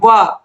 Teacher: जब आप व बोलोगे तो आप देखोगे जो आपके होंठ हैं वो निचले वाले होंठ ऊपरी दांतों को स्पर्श करते हैं, व। तो वकारस्य दंतोष्ठौ, जो व है इसका उच्चारण स्थान ओठ और दंत होता है।